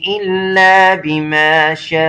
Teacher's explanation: 4 الف کے برابر یہ حرف مدہ لگا ہوا ہے، اس کو 4 الف کے برابر لمبا کرنا ہے